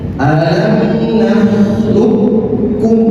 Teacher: langsung ke kafnya dileburkan seakan-akan kof ini tidak ada. Alam naklukum tasdid di sini.